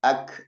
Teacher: Berdasarkan aliran napas, kaf ini hamas ya. Jadi banyak napas yang keluar ketika kita mengucapkan huruf kaf.